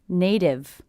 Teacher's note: I hear this t as a d because again it's a t coming between two vowel sounds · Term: flat T